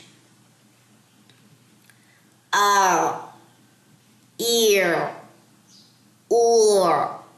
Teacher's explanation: اس پہ آواز دبانی نہیں ہے, نہیں, گلے میں دبے گی نہیں بالکل, کیونکہ یہ لن عمر میں سے یعنی کہ یہ توسط والے حروف میں سے ہے, تو اس میں آواز درمیانی رہتی ہے, نہ رکتی ہے نہ جاری رہے گی